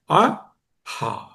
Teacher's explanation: హా అన్నప్పుడు గొంతులోంచి వస్తుంది, కొంచెం యాస్పిరేషన్ సౌండ్ వస్తుంది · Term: హకారము